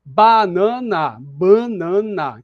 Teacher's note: próxima consoante nasal que tá em outra sílaba banana banana então o n da outra sílaba influencia o a da sílaba anterior · nasalização é quando a vogal nasal era oral mas ela sofre assimilação de uma consoante próxima consoante nasal que tá em outra sílaba banana banana então o n da outra sílaba influencia o a